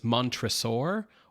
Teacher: So, I've always pronounced this guy's name Montressor, but in this movie, it's the accent is on the middle syllable. So, it's mantraur or as >> like dinosaur, >> right?